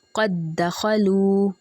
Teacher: دال پہ ہم نے پریشر دیا، یہ ادغام واجب ہے، ٹھیک ہے۔ اس میں لازمی آپ نے جوائن کرنا ہوتا ہے تو آپ نے ذرا پریشر دینا ہوتا ہے تھوڑا سا زیادہ، ٹھیک ہے۔